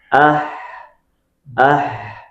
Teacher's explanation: harus ada hames, harus ada rakha dan lidah itu posisinya istifal infita dan ismatnya benar-benar kita perhatikan dan bukan hanya perhatikan sifat tapi makhrajnya benar-benar keluar dari tengah tenggorokan. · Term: huruf ha